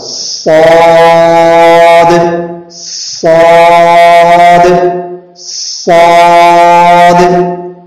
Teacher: صاد ادا ہو، سیٹی کے ساتھ پر ہو اور الف بھی پر ہو اور دال میں قلقلہ ہو